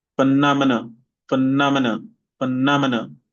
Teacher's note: So nom is the one with the main stress.